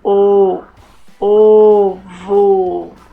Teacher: na palavra ovo, a letra O tem o som fraco e fechado. Lemos a palavra ovo com o, ovo.